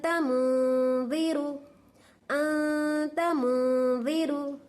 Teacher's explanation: नून की आवाज को नाक में छुपा को गुन्ना करना